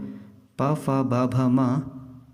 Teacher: पवर्ग, मुंह में दोनों होठों की सहायता से।